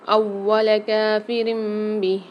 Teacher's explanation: واو پر مشدد آ رہی ہے تو اس کو سختی اور جماؤں کے ساتھ پڑھیں گے